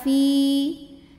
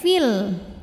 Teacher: Kalau berhenti panjang dua harakat Fi namun dibaca panjangnya hanya saat berhenti saja kalau wasal pendek fil karena apa Karena gugur huruf madnya sebab ada pertemuan dua sukun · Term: Mad Thobi'i